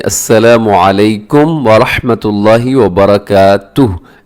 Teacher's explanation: लोग पढ़ते हैं व बरकातुहु, जैसे अब अगर सलाम भी करना होता है किसी को तो अस्सलामु अलैकुम व रहमतुल्लाहि व बरकातुहु ऐसे, तो ये दुरुस्त नहीं है, बल्कि आखिर में हा को साकिन कर दें। अगर आप रुक रहे हैं, आपका सांस टूट रहा है, क्या करें कि आखिर में हा को साकिन कर दें